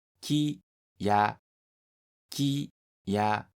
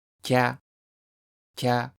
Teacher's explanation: when small ya follows after ki, the vowel sound e disappears from ki and it is pronounced kya, kya as a single syllable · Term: contracted sounds